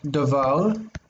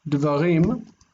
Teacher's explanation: The one before the accent, we call it pretonic. The pretonic syllable lengthens. It gets longer. So if it's patach, it becomes kamatz.